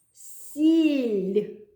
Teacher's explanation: м'який знак пом'якшує звук л і тому він м'який